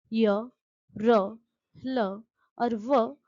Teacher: इनका उच्चारण करते समय जीभ मुख के किसी भाग को पूर्ण रूप से स्पर्श नहीं करती। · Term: अंतस्थ व्यंजन